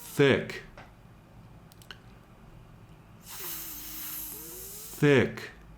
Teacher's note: Again, really lengthen out that initial TH sound. The K is a hard stopped sound, but you can really lengthen both the TH and the I if you'd like to.